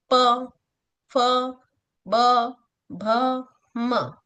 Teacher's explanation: एक होता है प वर्ग। इसे ओष्ठय बोलते हैं क्योंकि इन्हें बोलते समय होठ आपस में जुड़ते हैं।